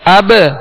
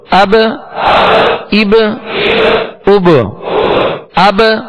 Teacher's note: اب اس میں با کی ادائیگی ہوگی، با ساکن ہے اور با میں قلقلہ کریں گے، با حروف قلقلہ میں سے ہے